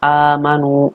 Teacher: Amanu ini adalah mad badal panjang, bacaannya panjangnya itu 2 harokat. Dinamakan mad badal itu karena ada mad tabi'i bertemu dengan hamzah, tetapi mad tabi'i ini berada di setelah hamzah, artinya didahului oleh huruf hamzah.